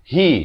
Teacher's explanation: ha itu makhrajnya di pangkal kerongkong.